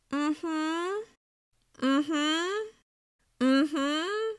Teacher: The somewhat wavy, non-committal intonation signals that the other person's agreeing, but they don't 100% mean it. They may be feeling like they need to agree, but the truth is they didn't enjoy the movie.